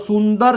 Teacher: દાખલા તરીકે સુંદર શબ્દ છે તો સુંદર શબ્દ એની નોંધ સ ઉપરના અનુસ્વારની નોંધ નાકને લેવી પડે છે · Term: અનુનાસિક